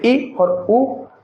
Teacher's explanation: सव्रत स्वर में मुख कम खुलता है, जैसे ई और उ।